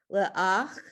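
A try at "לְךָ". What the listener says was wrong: Careful. Look at that word again with lamed. This one's not an ach, it's the other. Lecha.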